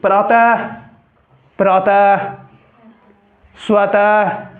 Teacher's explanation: यही यहाँ ये पंक्ति था, ये पट्टी, यहाँ देखो दृष्टि, है संयुक्त है, पहले वाला पे आपको जोर देना पड़ रहा है, इसी को कहते हैं बल देना पड़ रहा है। प्रातः, विसर्ग बोले से पहले वाला वर्ण पे आपको जोर देना पड़ता है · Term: बलाघात